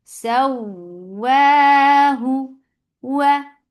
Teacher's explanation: when you're saying wow, your lips should be in a circle position. You are not using your teeth to say this wow.